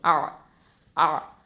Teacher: ஐன் வசத்துல் ஹல்குலேருந்து வருது, நடுத்தொண்டை